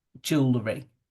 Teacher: that second or third E, when it's written, is not heard when we say the word out loud